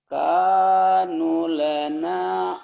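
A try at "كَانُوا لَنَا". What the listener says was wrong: salah nunya panjang juga. Nanya pendek. Kanu lana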